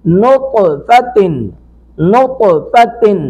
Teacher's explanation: طا ساکن پر قلقلہ کریں گے